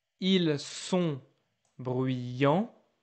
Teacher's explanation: don't hear the S